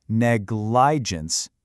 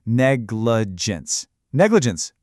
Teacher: Sometimes in a middle syllable that doesn't get a lot of stress, the vowel sound gets kind of lazy and softens to this weak uh sound. It's called the schwah.